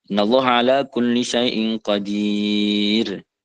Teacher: Misalnya kan tulisannya qadiro, setelah ro itu ada fathah qadiro, tapi karena di ayat diberhentikan, dia yang tadinya mad asli atau cukup 2, maka bacanya itu lebih dari 2. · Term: Mad arid li sukun